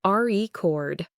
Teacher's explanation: the company's official record of sales, the noun, with the stress on the first syllable